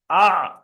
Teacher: আইনটা নেন, আ, গলার মাঝখান থেকে হবে